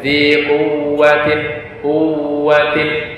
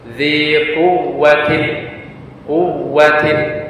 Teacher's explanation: Adapun yang waw yang bertasydid atau diistilahkan dengan naber, bacaan naber, bacanya sedikit menekan pada huruf waw tersebut